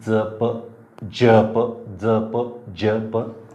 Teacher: दंत तालव्य हे त्याचं उच्चार स्थान झालेलं आहे